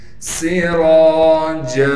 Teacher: سین میں سیٹی ادا کریں گے، را کو موٹا کر کے پڑھیں گے، جیم پر جب وقف کریں گے پھر جیم کو ایک الف کے مقدار کھینچیں گے.